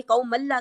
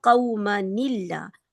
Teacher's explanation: یہ جو نون ہے، جو نون پہلا ساکن تھا اس کا، اس کے نیچے کسرہ آ جائے گی